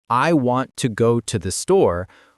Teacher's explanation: English has a stress-timed rhythm, which means important content words get emphasized while function words get rushed through. In the sentence, I want to go to the store, want and store are clear and strong, but to and the zoom by quickly.